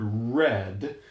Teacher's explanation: an approximant that happens right around the gum ridge behind the upper teeth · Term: turned R